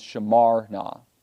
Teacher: mocked the two are considered as one word and so then the stress is shifted from the verb to the particle na